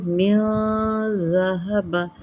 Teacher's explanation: ذہبہ نہیں کرنا، ز نہیں ہے، یہ ذال ہے، ذال نرم